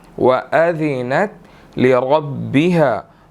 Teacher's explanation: را کو موٹا ادا کریں گے، را کے اوپر زبر ہے، ٹھیک ہے، اور آگے جو با ہے را اس کے ساتھ مل رہی ہے، لِرَبِّهَا، ٹھیک ہے۔